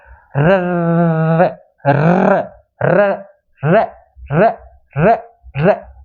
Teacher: कंपन करना पड़ता है र र र र र र र जीवा ऐसे दो तीन बार ऐसे कंपन करती है · प्रकंपित व्यंजन वे व्यंजन जिनके उच्चारण में जीवा 2-3 बार कंपन करना पड़ता है ना, 2-3 बार जीवा को कंपन करना पड़ता है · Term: लुंठित वर्ण